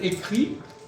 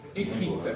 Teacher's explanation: Au Masculin on entend pas le T au féminin on l'entend